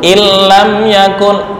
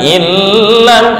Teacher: Ini nggak boleh dengung lama-lama, namanya idgham bila gunnah.